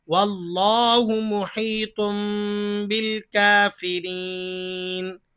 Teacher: تنوین کے بعد حرف با آ رہا ہے، اقلاب ہوگا یعنی تنوین کی آواز میم میں تبدیل ہو جائے گی